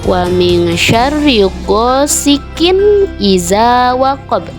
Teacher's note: dibacanya dengan wajib terang atau jelas, tidak boleh berdengung.